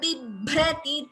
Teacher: Here we have B and Bhr together. The first B is Alpa Prana. The second one is a Mahaprana.